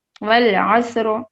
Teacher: پھر سواد سے پہلے والا جو حرف ہے حرف عین, عین کے اوپر زبر ہے, تو اب اس کی وجہ سے, اس کی مناسبت سے حرف را کو ہم موٹا پڑھیں گے